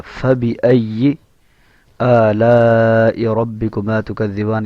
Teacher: اوپر والے دانت اور نچلے ہونٹ کا اندرونی حصہ، وہاں سے فا ادا ہوگا